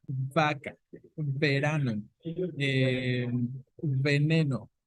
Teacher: Labiodental porque se produce uniendo los dientes superiores, perdón, al labio inferior